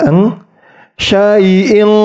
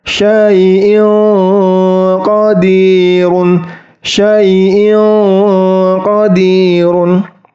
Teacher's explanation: ketika mengenai langit-langit itu terdengar bunyi Eng tebal · Eng qir Jadi tidak boleh t huruf Eng tetapi samar karena belakang lidahnya itu tidak menyentuh langit-langit atau hanya mendekati langit-langit saja